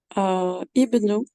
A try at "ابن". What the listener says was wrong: Juste là, du coup, ici, faut pas prononcer le alif. C'est pas ibnou.